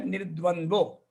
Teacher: Visarga get drops. It becomes Nirdvandvo.